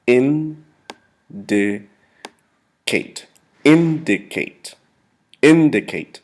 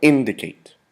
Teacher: the accent is placed in the first syllable of indicate